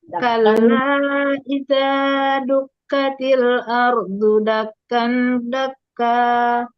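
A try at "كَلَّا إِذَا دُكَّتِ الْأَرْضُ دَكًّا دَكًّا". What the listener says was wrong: Ya, cuman kurang dangungannya kurang kurang sempurna gitu ya. Dakkan, cuma sedikit banget di dengungnya.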